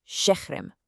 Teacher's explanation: the second vowel in the word just vanishes. For example, the word for city is şehir. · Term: vowel drop